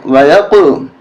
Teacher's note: یا قاف زبر یق قاف پر قلقلہ کریں